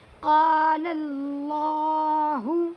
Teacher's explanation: اللہ کے لام سے پہلے لام کے اوپر زبر آیا ہوا ہے، اسی لیے اللہ کے لام کو پر پڑھیں گے